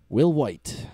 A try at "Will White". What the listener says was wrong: Why are you putting so much emphasis on the H?